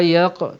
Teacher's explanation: Qaf mesti ada bunyi qalqalah, mesti ada lantunan. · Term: qalqalah sughra